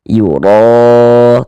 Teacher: Sehingga dengan mengangkat atau menaikkan pangkal lidah kita ketika kita mengucapkannya. Yuro tebalkan ro dibaca panjang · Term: dibaca tebal, dibaca tabkhim